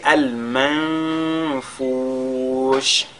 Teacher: nous avons un nun sakin et tout, suivi de la lettre Fa. On fait ici ce qu'on a appelé al-ikhfa.